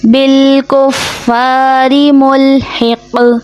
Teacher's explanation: یہ قوف موٹا ہے اور قوف حرف قلقلہ میں سے بھی ہے، مطلب آواز پلٹ کے واپس آئے گی. کیونکہ یہ آخر میں آ رہا ہے، ہمارے یہاں پہ ہم ختم کر رہے ہیں تو اس کی آواز پلٹ کے واپس آئے گی.